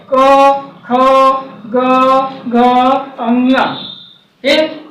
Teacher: क वर्ग जो होता है कंठ से होता है, जिसकी ध्वनि कंठ से उच्चारित होती है